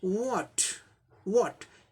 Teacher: वो और ह साउंड मिलके वो ये साउंड अमेरिकन प्रोनाउंसिएशन में आता है, जो कि ब्रिटिश प्रोनाउंसिएशन में नहीं होता है, which is absent in British English pronunciation.